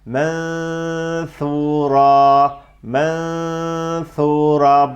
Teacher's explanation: nun harfine dil bastırılıp sonra f harfi ile gidilmiyor mö Fora şeklinde değil F harfini söylemeye hazır bekletiliyor şihab ufak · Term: ihfa